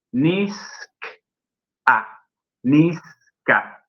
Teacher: K ejerce influencia sobre la Z. ¿De qué manera? Haciendo que la Z se transforme en una S.